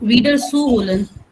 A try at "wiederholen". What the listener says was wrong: Wiederholen, zu wiederholen. Das ist nicht trennbar. Wiederholen. That's why I said stress on the second syllable. Wiederholen. Not wiederholen. Das ist ein nicht trennbares Verb. Wiederholen. So, zu wiederholen.